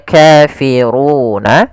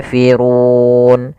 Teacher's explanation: Awalnya kafiruna karena waqaf nunnya kita matikan menjadi kafirun. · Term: sukun arid